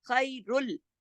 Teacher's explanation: خیرل ادغام ہو رہا ہے، را لام میں جڑ رہا ہے لیکن غنہ نہیں ہو رہا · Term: ادغام تام بلا غنہ